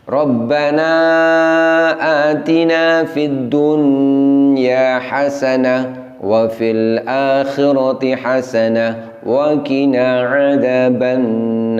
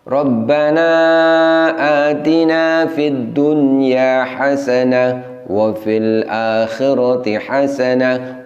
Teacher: dengungnya terlalu panjang dan terlalu lama